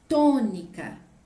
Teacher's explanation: Tônica, K é a última sílaba, Ni é a penúltima, To é a antepenúltima, ela é a mais forte e está acentuada. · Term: proparoxítona